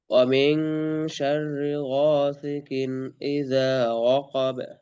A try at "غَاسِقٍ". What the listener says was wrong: غاسي হয়ে যাচ্ছে, সিন তো শক্ত। غاسي, সি, غاسق, সি বলেন কেন?